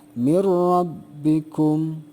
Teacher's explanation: jadi bunyi Nun matinya tidak ada gitu ya tapi dimasukkan atau dilebur ke dalam huruf idgham yang ada di hadapan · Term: idgham bilagunnah